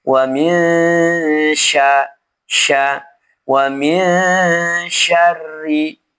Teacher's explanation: Cara membacanya nun sukun ini dibaca ghunah dengan cara menyamarkan bunyi nun dan diarahkan ke huruf setelahnya. Posisi lidah di bawah. · ronnya juga dibaca tipis karena dia kasrah